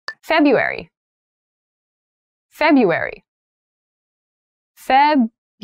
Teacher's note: that first r isn't really pronounced